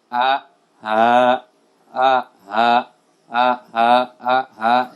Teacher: Kemudian dari pangkal tenggorokan keluar huruf hamzah dan ha